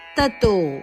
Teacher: ಇಲ್ಲಿ ತಥೋ ಅಲ್ಲ ತತೋ ಮಹಾಪ್ರಾಣ ಇಲ್ಲ